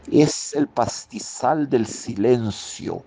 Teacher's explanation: El uso de la sibilante fricativa de fricción, S